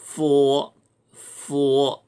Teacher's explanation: 그 다음 것이 순치음인데 우회 이빨로 밑에 입술을 살짝 물었다 띄면서 포 마찰음입니다. F자는 포 하고 읽으면 됩니다.